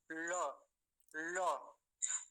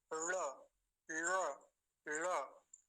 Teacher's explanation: जीभ को बिल्कुल ऊपर वहां ले जाएंगे जहां से ट बोला जाता है जहां से ठ बोला जाता है वही से ल बोलेंगे